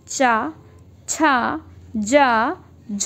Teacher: इसमें जिह्वा उच्चारण स्थान को रगड़ती हुई जाती है, मतलब इसमें जो जीभ है आप लोगों की वो उच्चारण स्थान को रगड़ते हुए मतलब टच करते हुए जाती है। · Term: स्पर्श संघर्षी व्यंजन